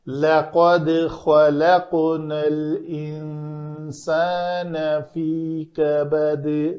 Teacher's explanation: نون کے بعد سین ہے حروف اخفاء میں سے، تو ان نون کا اخفاء کریں گے